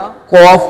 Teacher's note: زبان کی جڑ اور تالو کے نرم حصے سے ادا ہوتا ہے۔